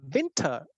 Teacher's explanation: win is stressed, ter is unstressed